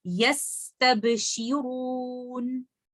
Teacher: Noon, when I'm choosing to stop, it is Sakin and it is a letter of Tawassut or Bainiya. So my timing for Sin should be more than timing of Noon and timing of Ba. So the timing of Noon when I'm choosing to stop should be more than timing of Ba, but less than Sin.